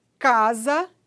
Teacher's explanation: É quando o articulador ativo é a parte posterior da língua e o articulador passivo é o véu palatino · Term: velar